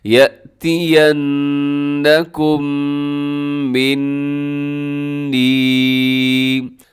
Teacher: یہاں بھی آواز کو ناک میں لے جائے گا، يَأْتِيَنَّكُمْ مِنِّي، یہاں میم مشدد بھی ہے اور نون مشدد بھی ہے تو دونوں میں غنہ کرنا ہے